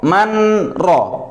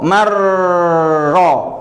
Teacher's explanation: Oke, maka makhrajnya kerja sekali langsung masuk ke ro. Dan hasil suaranya juga satu, yang keluar hanyalah suara ro, suara nunnya hilang. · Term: idgham